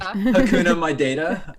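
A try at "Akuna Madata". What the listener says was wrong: There's no A. It's not Hakuna. It's Akuna, my data. A.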